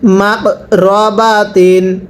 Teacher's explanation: এরপরে মিম কফ জবর মাক, এই যে কফটা কলকলা হরফ, তাহলে কফে যদি সাকিন হয় কলকলা করে পড়তে হয়, কফটা কলকলা হরফ, কলকলা মানে ধাক্কা দিয়ে পড়তে হয় আওয়াজের মধ্যে